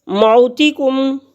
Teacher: واو ساکن سے پہلے لفظ پر زبر ہے تو یہ واو لین ہے اور اس کے کھینچنے کی مقدار جو ہے وہ بھی ایک الف کے برابر ہے۔ موتکم، میم ساکن کے بعد میم اور با کے علاوہ کوئی بھی لفظ آ جائے تو اظہار شفوی ہوگا۔